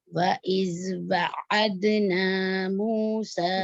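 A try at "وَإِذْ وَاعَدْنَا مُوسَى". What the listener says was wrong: وعدنا، ذال میں اور نرمی لائیے لفظیہ. وَإِذْ وعدنا، وعدنا نہیں ہے، اس کا واو الف پڑھا جائے گا. ویسے تو ہم لوگ کو پتہ چل گیا کہ اس کو لکھا نہیں جاتا لیکن پڑھا جاتا ہے، تو اس کی نشانی الف ثقیلہ پڑھے ہوئے ہیں. وعدنا نہیں، واو فتح الف سکون میں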